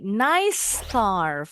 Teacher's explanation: Bunyi s-nya jadi agak panjang dikit. Enggak boleh cepat-cepat bacanya.